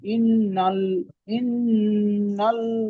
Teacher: টান হবে না গুন্না হবে